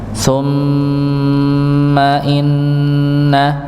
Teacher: sedangkan pada mim dan nun ketika dia bertasydid maka tidak ada hentakan fokus pada dengungnya